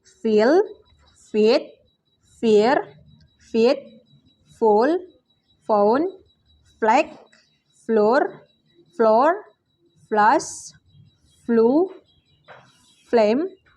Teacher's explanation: voiceless labiodental fricative sound F